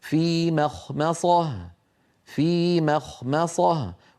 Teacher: فلا يصح ان تفخم هذه الميم بل علينا او هاتان الميمان بالاحرى علينا ان نرققهما